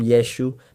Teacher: But if you were a Galilean living in Jesus' neighborhood, growing up with him as a child, you would call him Yeshua because that's how Galileans spoke. They didn't pronounce the letter ayin. They didn't say it. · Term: Galilean pronunciation